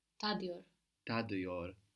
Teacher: The T is softened to a D by the vowel, and that vowel is a dotless I.